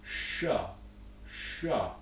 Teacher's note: tongue tip that's the main difference between the two of these there also tends to be interestingly lip rounding for the post alveolar ones in american english